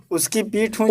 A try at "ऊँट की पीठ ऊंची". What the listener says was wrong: उसकी नहीं,